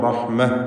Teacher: അവിടെ വഖഫ് ചെയ്യുമ്പോൾ റഹ്മ എന്ന് സക്കിനത്തായ ഹ നൽകി തായിനെ ഹ ആക്കി മാറ്റണം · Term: ഹാഉത്ത് തഅനീസ്